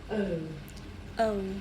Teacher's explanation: the shape the mouth makes changes from the beginning of the sound to the end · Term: double bowel sound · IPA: /əʊ/